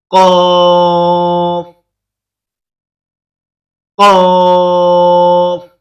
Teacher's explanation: زبان کی جڑ کو کوے کے متصل تالو پر لگا کر موٹی آواز میں پڑھیں گے